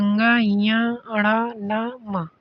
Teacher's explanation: इसमें वायु और मुख दोनों यानी कि मुख और नाक दोनों का प्रयोग होता है। फेफड़े से उठने वाली वायु मुख के साथ नासिका के द्वारा भी बाहर निकलती है। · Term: नासिक्य व्यंजन